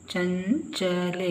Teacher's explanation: ಲಕ್ಷ್ಮಿ ಚ ಗೆ ಸೊನ್ನೆ ಚಂಚಲೆ ಚ ಗೆ ಒಂದು ಸೊನ್ನೆ ಚಂ ಚಂಚಲೆ ಇಲ್ಲಿ ಸೊನ್ನೆ ನಂತರ ಚದಿಂದ ನ ಉಚ್ಚಾರ ಬರುತ್ತೆ